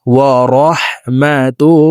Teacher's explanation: এই লামকে মোটা করে পড়তে হবে, কারণ আল্লাহ শব্দের আগের হরফে জবর অথবা পেশ হইলে এই লামকে মোটা করে অর্থাৎ ল বলে পড়িতে হয়।